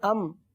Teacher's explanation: ام اظہار شفیع کا قاعدہ ہوگا، گنہ نہیں کریں گے